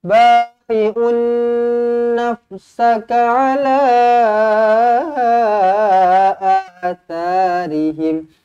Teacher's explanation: Ala, la dibaca dengan panjang, ada ombak rindu di sini, 4 ataupun 5 harakat.